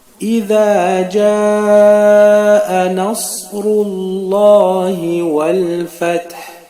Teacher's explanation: étant donné que le ra qui précède le nom d'Allah, il a un dhamma, le son ou, ce qui fait que le nom d'Allah sera prononcé non pas bouche vide, mais bouche pleine. · le dhal se prononce sur le bout de la langue.